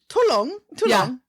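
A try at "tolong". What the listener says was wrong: no you don't pronounce the L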